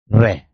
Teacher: जीभ की नोक वायु से रगड़ खाकर कांपती है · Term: लुंठित व्यंजन